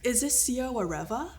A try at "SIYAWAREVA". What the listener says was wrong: Almost SIYAWAREVA. Yes, the R's gotta roll.